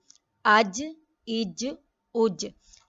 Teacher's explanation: middle of tongue جو ہے وہ روف آف ماؤتھ سے ٹچ ہو رہی ہے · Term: جیم